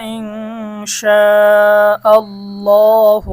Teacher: আল্লাহ শব্দের ডানে জবর আসার কারণে আল্লাহ শব্দের লাম মোটা হবে